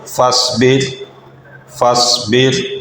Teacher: اس کو فصبر ایسے موٹا کر کے ادا نہیں کرنا، فصبر باریکی سے ادا کرنا ہے